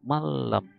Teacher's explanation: Huruf bila gunnah, maka dibacanya dimasukkan ke lam tetapi tidak gunnah. Jadi bacanya malam. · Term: idgham bila gunnah